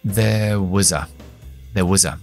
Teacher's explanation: el was es una palabra que debilitamos con la schwa y se queda en was.